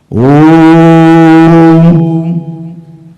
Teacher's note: म म्हणण्याकरता काही केलं नाही फक्त तोंड बंद केलं ओम मग म्हटला का मी? नाही म्हटला. इथे काय केलं ओ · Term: मकार